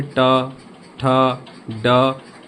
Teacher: सभी में जीभ आपके मूर्धा को टच कर रही है, ऊपर के हिस्से में आगे की तरफ टच कर रही है।